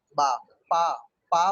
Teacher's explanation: बा, अब बा हम बोले तो नीचे लिप्स और ऊपर लिप्स टकराया तो बा निकला, बा। ये प्लेसमेंट ऑफ साउंड है। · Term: बाइलिबियल साउंड